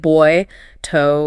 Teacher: two vowel sounds gliding together